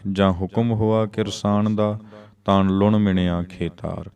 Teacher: ਜਾਂ ਤੇ ਤਾਂ ਇੱਥੇ ਯੋਜਕੀ ਰੂਪ ਹਨ, ਇਸ ਲਈ ਇਹਨਾਂ ਦਾ ਉਚਾਰਨ ਨਾਸਕੀ ਹੋਏਗਾ। ਪੜਨਾਮੀ ਰੂਪ ਨਹੀਂ ਹਨ ਤਾਂ ਨਾਸਕੀ ਉਚਾਰਨ ਆਪਾਂ ਕਰਾਂਗੇ।